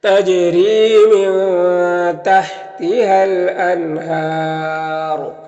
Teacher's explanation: یہاں پر وقف کریں گے تو را کو پر پڑھیں گے اور مد عارض وقفی ہوگا